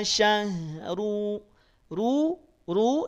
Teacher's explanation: dibaca tebal Kenapa tebal karena dia berharakat Dom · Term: huruf ro